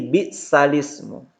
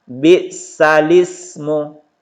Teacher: Yaitu memindahkan harokat hamzah, ini yang berharokat ini hamzah i, kepada huruf sebelumnya menjadi bisalismu. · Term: naqal